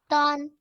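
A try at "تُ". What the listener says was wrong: Make your lips fully round. I said like a circle. Complete circle. Small circle. Your lips should be in this shape. Make your lips in this shape. Then say the sound. More circular. No, more circular. It should be more circular, smaller in size. More circular, I said. Now, make your lips fully round. Fully round. Fully. More smaller in size.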